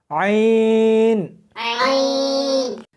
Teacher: اس کو حلق میں سے سختی کے ساتھ نکالنا ہے۔ عین، ملا کر پڑھیں۔